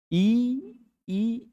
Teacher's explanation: इ ई स्पर्श तो नहीं होता लेकिन हवा तालु पर रहती है।